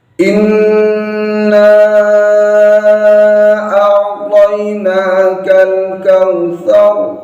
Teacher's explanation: Ini rohnya harus dibaca tebal. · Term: ro tafkhim